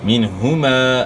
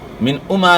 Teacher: نون ساکن کے بعد حروف حلقی میں سے ہا ہے، تو یہاں اظہار ہوگا، یعنی غنہ نہیں ہوگا · منہما، من اما نہیں پڑھنا، منہما پڑھنا ہے. ہا کو اپنے مخرج سے یعنی گلے کے آخر سے ادا کرنا ہے